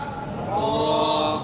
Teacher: जुबान की नोक और ऊपर के दांतों के मसूड़े से मिलकर